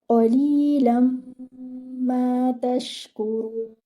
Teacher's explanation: Qaf should be heavy, should be given one count. Your lam should be given 2 counts because it is with ya maddiya.